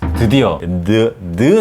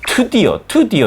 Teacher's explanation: This is Korean deu. It's a voiced sound.